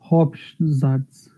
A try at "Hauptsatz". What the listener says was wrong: Haupt, it's the T sound. Haupt,